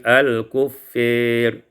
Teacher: Pada ayat yang ke-34, al-kuffari imalatu fathatil fa wal alif, dibaca imalah fathah fa dan alif menjadi al-kuffir.